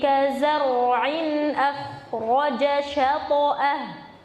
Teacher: di situ kazar'in tebal roknya, akhraja juga tebal. Jadi bukan kazar'in tapi kazar'in tebalkan.